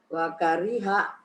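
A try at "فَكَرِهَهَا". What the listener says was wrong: Bukan wa ya Bu. Fakariha.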